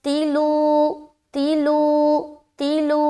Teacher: جن حرفوں کو باریک پڑھنے کا حکم ہے اس کے اندر لام آتا ہے، لہٰذا لام کو ہم باریکی سے ادا کریں گے